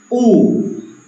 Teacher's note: la u es como hacia atrás hacia arriba como lo muestra el gráfico u y la a es abriendo